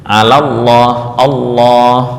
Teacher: Catatan yang keempat bahwa tafhim lam harus dimulai dari awal lam hingga akhirnya, yaitu lam pertama dari tasydid dan lam kedua dari tasydid. Dan penting juga bahwa yang ditebalkan hanya lam bukan hamzah wasal sebelumnya